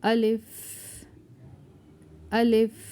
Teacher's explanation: Alif articulation point is in our mouth, empty part of our mouth.